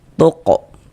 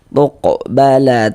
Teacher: dia masuk kepada qalqalah kecil, qalqalah sugra karena dia berada di tengah kalimat atau bisa juga kita pahami karena dia berada di tengah bacaan kita.